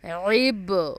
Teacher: اب دیکھیں اس میں با بھی انکلوڈ ہے، با پہ جزم ہے تو اس پہ قلقلہ ہوگا، اس کو پش کر کے پڑھیں گے دبا کے